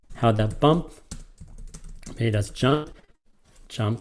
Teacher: the emphasis the accent the stress is on bump and is on jump · how that bump made us jump is anapestic the emphasis the accent the stress is on bump and is